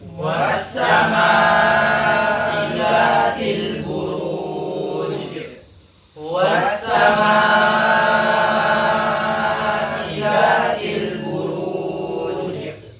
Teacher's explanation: Maka ra di sini dalam keadaan mufakhamah